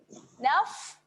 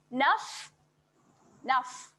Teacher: Ketika huruf fa bertanda sukun, dia ada keluar angin sedikit. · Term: sifat berangin